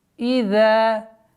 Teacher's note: Ударение в размере двух огласовок. Межзубное произношение звука заль.